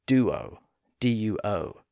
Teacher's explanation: often pronounced as duo with a slight W sound in the middle